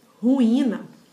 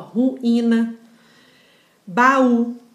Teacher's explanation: o I, ele é a segunda vogal tônica do hiato